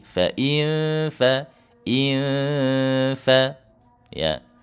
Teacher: Jadi ditempelkan gigi seri atasnya ke bibir bawah.